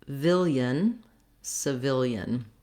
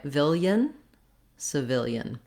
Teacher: the syllable of the second syllable of vil in civilian is stressed. To practice that, a great way to get the rhythm and the sounds is to start on that stressed syllable.